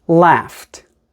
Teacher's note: the F sound made by GH is an unvoiced sound because it is unvoiced the Ed makes a t sound